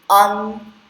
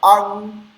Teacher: O primeiro, an, fecha aqui com a língua no dente, an. E o segundo, com a garganta, o G na garganta